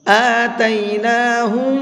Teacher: میم ساکن کے بعد اگر میم آتا ہے تو وہاں پر غنہ کر کے پڑھتے ہیں، اور غنہ کہتے ہیں ناک میں آواز کو روک کر کے پڑھنا۔ آتیناہم، یہ جو میں لاسٹ میں آواز کو ناک میں روک رہا ہوں یہ غنہ کہلاتا ہے